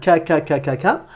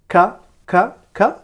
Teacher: Vous reculez votre langue vers l'arrière, vous la faites glisser vers l'arrière.